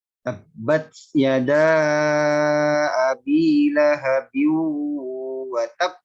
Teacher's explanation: be-nya itu harus jelas dan ditahan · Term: qalqalah